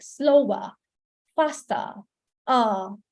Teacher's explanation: And also, these are very, very common because the British accent is non-rhotic. They don't pronounce the R.